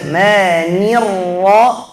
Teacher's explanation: Jangan terlalu panjangkan mimnya, bukan mani.